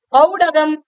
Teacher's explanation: ஔன்னு சொல்லும் போது 2 மாத்திரை, ஆனா ஔடதம்னு சொல்லும் போது 1.5 மாத்திரை அளவுல ஒலிக்கும் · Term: ஔகார குறுக்கம்